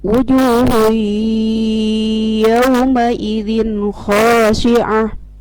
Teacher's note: Wujuhun idgham ma'al gunnah. Tanwin doma bertemu dengan huruf ya, maka dimasukkan suara tanwin kepada huruf ya dan didengungkan.